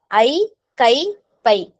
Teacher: தனியா ஐகார எழுத்துல தனியா வந்துச்சு அப்படின்னா அது ரெண்டு மாத்திரை ஏன்னா ஐ அப்படிங்கறது என்னது நெடில் எழுத்து